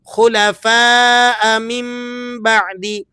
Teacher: خلفاء من بعدی ہونا چاہیے تھا، من بعدی، لیکن ہم اقلاب کی وجہ سے اسے پڑھیں گے من بعدی، میم، نون کی آواز کو چینج کر دیں گے میم کی آواز میں